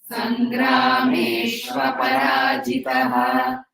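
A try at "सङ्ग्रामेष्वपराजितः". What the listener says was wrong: So this Sangrameshu Aparajitaha. Aparajitaha is the word. So you should not give a pause. You're not giving exactly a pause after Sangrameshva. You understand that Va should come with Pa. Aparajitaha. Sangrameshu Aparajitaha.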